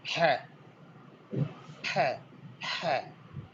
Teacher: In the pharyngeal region, you will be able to produce ha